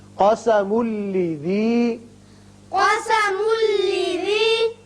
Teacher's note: میم کو جب لام سے ملائیں گے، تنوین کے بعد لام ہے، ادغام بغیر غنہ ہوگا